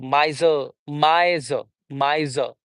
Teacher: There is no final r sound in British English, but in American English there is r sound.